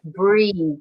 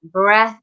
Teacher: where this does have a we have breathe so we have a much longer vowel sound in the middle